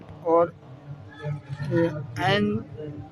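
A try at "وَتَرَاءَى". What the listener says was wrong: نہیں ہے، حمزہ ہے. ای. وترا.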